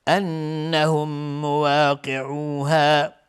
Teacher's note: نون مشدد دو حرکت غنه میدیم